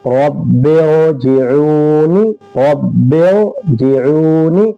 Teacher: یہاں پر قاعدہ مختلف ہوگا۔ رائے ساکنہ سے پہلے زیر اگر دوسرے کلمہ میں ہو تو رائے ساکنہ کو ہم باریک نہیں بلکہ پر پڑھیں گے۔